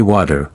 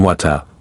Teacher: Now, you switch to a British show and you hear water again, but it sounds different. In American English, people might say water, with a D sound, while in British English, it's often water, with a T sound.